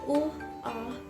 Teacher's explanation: If you're having trouble finding it, say the word ooh, ah. The noise is the small sharp stop you make between the two sounds, like your voice was just cut short.